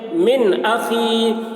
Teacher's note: या साकिन से पहले ज़ेर है, या मद्दा हुआ, इसलिए या मद्दा को एक अलिफ के बराबर खींच कर पढ़ेंगे